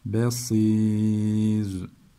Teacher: Ra'yı da ince okuduk. · B ince sat kalın olacak. Basir değil, ba değil, B olacak.